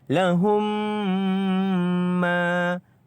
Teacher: Kita masukkan mim ini ke dalam huruf mim yang kedua. Mim mati kepada mim yang kedua. Lahum, dan kita dengungkan 2 harakat.